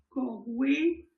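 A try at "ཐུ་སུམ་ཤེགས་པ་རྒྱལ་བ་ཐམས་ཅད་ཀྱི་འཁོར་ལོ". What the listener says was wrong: C'est pas Corwe, c'est Corle, mais c'est pas grave.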